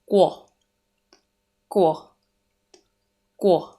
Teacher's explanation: Letter Q sound is made up of two phonemes or two sounds. The combination of the sound of letter K and letter W. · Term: qu sound